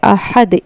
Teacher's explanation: ह का मखरज हलक के दरमियानी हिस्से से अदा होता है। दो चश्मियां हलक के सीने की तरफ वाले हिस्से से अदा होता है।